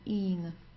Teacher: So just a long I and then an N.